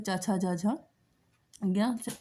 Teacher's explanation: तालव्य वर्ण है, ई इचू ऐसा नाम तालु, तो ई छोटी या बड़ी, और चा वर्ग चा छा जा झा या, और ये सब कहाँ से बोले जाते हैं? ये सब आपका तालु से बोले जाते हैं।